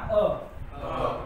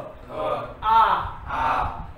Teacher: चला म्हणा अ अ आ ला कमी वेळ लागला म्हणून अ काय आला ऱ्हस्व, आणि आ ला जास्त वेळ लागला म्हणून आ ला दीर्घ